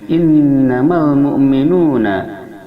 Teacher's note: nun bertasydid, hukumnya adalah gunnah, didengungkan dua harakat pada hidung.